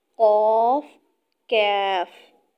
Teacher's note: یاد رہے کہ دو نقطوں والا قاف حروف مستعلیہ میں سے ہے، یعنی یہ حروف مستعلیہ دو نقطوں والا قاف موٹا ادا کیا جائے گا، اور ڈنڈے والا کاف حروف مستفیلہ میں سے ہے، یہ باریک ادا ہوگا۔ ان دونوں حروفوں کو ادا کرتے وقت فرق واضح ہونا چاہیے، قاف، کاف۔